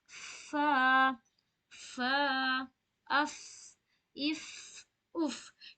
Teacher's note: ऊपर की सामने वाली दांत नीचे की अंदरूनी होंठ को टच करेगी